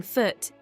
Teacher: the tongue is high and towards the back of the mouth and the lips are rounded